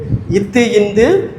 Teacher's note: மேல்வாய் பல்லின் அடி நாக்கின் நுனியை தொடுவது